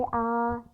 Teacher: हमारे होठों की जो आकृति होती है वो वृत्त के समान नहीं होती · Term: अवृत्ताकार स्वर